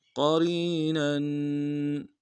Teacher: क़रीनन में क़ाफ को मोटा अदा करेंगे, रा को या के सामने आना, या लीन है, या मद्दा है, बगैर या मद्दा को एक दाम में खींचेंगे। रा को बारीक अदा करेंगे, नून के ऊपर तनवीन गुन्ना करेंगे